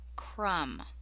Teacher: So MB just says the sound. It's like the B isn't there.